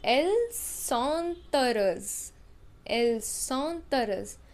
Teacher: Again I am using the rule of liaison since H is silent in French. Mute H we call it.